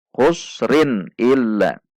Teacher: dibaca sebagai izhar karena tanwin bertemu dengan huruf alif